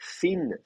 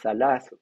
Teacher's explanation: Donc, l'interdentale, donc interdentale, ça veut dire que c'est entre les dents. Vous mettez la langue entre les dents